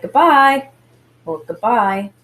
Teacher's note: the buy has more emphasis i'm saying that by syllable more strongly than the good syllable